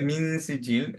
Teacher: যখন নুন উচ্চারণ করব টাং এর স্ট্রাকচারটা থাকবে হচ্ছে সিনের মত সিন উচ্চারণ করার মত